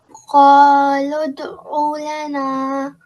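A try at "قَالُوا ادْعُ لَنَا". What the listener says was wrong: Give proper time to this normal elongation.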